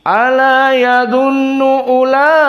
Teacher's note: di sini la Ika bertemu Hamzah dengan mad thi'i la Laika di kalimah Wahidah dinamakan mad wajib muttasil hukumnya maka dibaca al-isba Dibaca enam